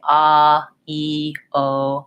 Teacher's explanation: So all of the vowel sounds are voiced. When I say ah, e, o, my voice is on. I'm touching my throat because I can feel the vibration of my vocal folds, and that gives it voicing.